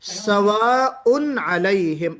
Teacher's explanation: तनवीन को अगर हम वस्ल के साथ यानी कंटिन्यू करते हुए पढ़ेंगे तो ही नून की आवाज आएगी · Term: नून तनवीन